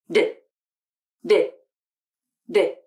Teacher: for the d consonant the airflow is stopped at the alveolar ridge the bumpy place on the roof of the mouth just behind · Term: stop consonant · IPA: /d/